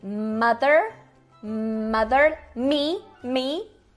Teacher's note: a gente tem a bilabial ainda nasal como em mother